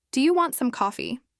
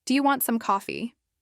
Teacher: That rising sound at the end invites a yes or no answer.